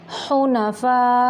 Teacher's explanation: मद मुत्तसिल वाजिब है, 5 या 6 सेकंड तक इसको लंबा करना है।